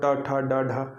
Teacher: फिर और आगे में जीभ थोड़ा पीछे की तरफ मुड़ जाएगी